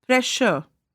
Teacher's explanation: There are some words which end in SURE but have a sh sound as in pressure.